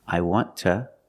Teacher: after a consonant it's ta